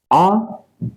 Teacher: आ पश्च भाग से बोला जाता है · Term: पश्च स्वर